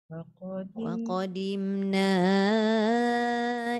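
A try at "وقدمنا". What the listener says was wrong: Jangan waqadim jadi dhad. Waqadimna ila ma.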